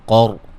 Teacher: قاف کو موٹا، را کو موٹا